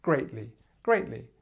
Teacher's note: your stress is at the beginning and you just have the li at the end. It's probably one of the easiest adverbs we're teaching today to say.